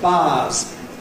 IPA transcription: baːz